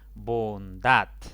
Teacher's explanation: esta palabra tiene dos sílabas la mayor intensidad cae en la última sílaba por lo tanto esa es la sílaba tónica